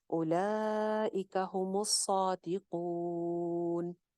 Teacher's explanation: अब यहाँ पे कून के ऊपर हम वक्फ कर रहे हैं तो मद्दे आरिज लगा सकते हैं, नून साकिन हो रहा है, पीछे हरूफे मद्दा में से वाव मद्दा आ रही है, तो यहाँ पे हम मद्दे आरिज लगाएंगे जिसको हम 3 से 4 अलिफ लंबा कर सकते हैं